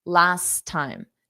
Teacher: we have those two T's, so I'm only going to pronounce one.